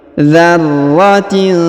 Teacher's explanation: huruf ro ditahan dan ditekan karena terdapat tanda tasdid